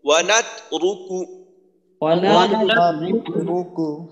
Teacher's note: র কিন্তু মোটা, রয় পেশ আছে, র মোটা হবে।